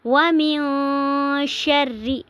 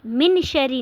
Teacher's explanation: نون کی آواز کو ہم ناک میں تھوڑی دیر کے لیے چھپائیں گے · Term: اخفا